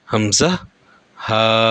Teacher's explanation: এক নম্বর মাখরাজ কন্ঠনালীর কন্ঠনালীর শুরু থেকে হামজাহ হা উচ্চারণ হয় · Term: 1 নম্বর মাখরাজ